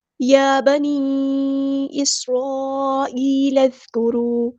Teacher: اس سین میں ہم سیٹی واضح کریں گے۔